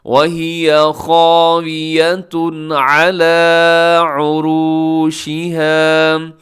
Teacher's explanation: قریۃ وہی خاویۃ علی، خاویہ میں خا موٹا الف موٹا، اور اس کے آخر میں تنوین کے بعد عین حروف حلقی میں سے یہاں پہ اظہار حلقی ہوگا